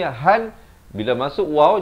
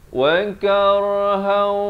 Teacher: Di sini kena baca wa karhan, dan di sini han bila masuk waw jadi idgham bi gunnah. Wa karhan, gitu, 2 harakat.